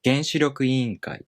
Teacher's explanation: the first part becomes unaccented, and the following part keeps its original pattern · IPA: [genshiryokuiiꜜnkai]